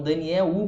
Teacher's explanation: em português a gente fala o som do L diferente. Se for no final das palavras, ele vai ter o som de U. Então, Daniel U, parece que tem a letra U ali, né?